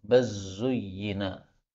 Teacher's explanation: bal zuyyina lam ketemu zain boleh idgham